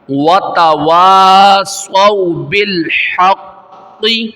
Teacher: تو صاد کو موٹا کرنا ہے اور ملا کے پڑھنا ہے واو کے ساتھ، وتواصوا بالحق، اب ملا کے پڑھ رہے ہیں، وتواصوا بالحق وتواصوا بالصبر، یہاں پہ بھی را کو ظاہر کرنا ہے واضح طور پہ.